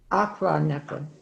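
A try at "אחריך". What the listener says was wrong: Achranecha. It's a double ch. Achranecha.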